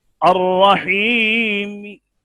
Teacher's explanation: جیسے یا یہ دیکھتے ہیں الرحیم، اس کو ہم پڑھیں گے الرحیم، تیسرا حصہ ظاہر کریں گے، اس میں حرکت کا تیسرا حصہ ظاہر کیا جاتا ہے، اور اس کا موقوف علیہ ساکن شمار نہیں کیا جاتا۔ حرکت تو ظاہر ہوئی نا، چاہے تیسرا حصہ ظاہر ہوئی۔ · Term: وقف بالروم